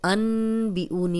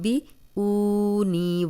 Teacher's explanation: جب نون ساکن کے بعد اگلا حرف با آئے گا تو نون ساکن میم میں بدل جائے گا